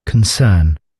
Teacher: So you sound like you're overdoing the R in the middle. And they've got like a real baby small R there, which normally means it's fairly quiet, it's not really there, it's half there